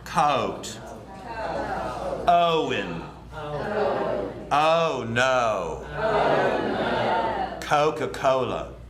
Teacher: Most of the South has more of an open O that goes from an ah to an O, so it's spread. Coat. Instead of ow.